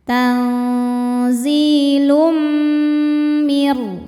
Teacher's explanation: Karena ada tanwin dhammah menghadapi mim. Cara bacanya tanwin dimasukkan ke mim disertai dengung. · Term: idgham bidunah, idgham bi gunnah